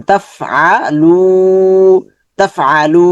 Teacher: লুটা লম্বা হবে। কেন লম্বা হবে? পেশের পরে জজমওয়ালা ওয়াও আছে, মাদের হরফ